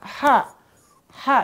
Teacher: maka ha itu ditenggorokkan tenggorokan tengah ya di tenggorokan Tengah